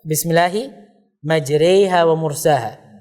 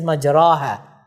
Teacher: we recite something between a long vowel and a kasrah